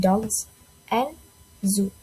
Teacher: So it is made by placing the tongue near the alo reach and letting the air pass through while the vocal cords is vibrate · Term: z sounds